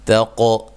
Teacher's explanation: تا کو باریک، قاف کو موٹا اور ہلا کے پڑھنا ہے